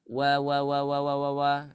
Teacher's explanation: wau bertasdid ini tanpa gunah suaranya · wau makhrajnya ada di asyafatain ada di kedua bibir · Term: wau bertasydid